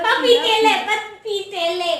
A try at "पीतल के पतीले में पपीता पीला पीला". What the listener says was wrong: पपीतेले में नहीं बोला मैंने, पपीते। पीतल के पतीले में पपीता पीला पीला।